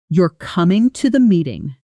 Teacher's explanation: said with falling intonation at the end. It's a statement, a simple fact.